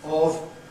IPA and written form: ɒv (of)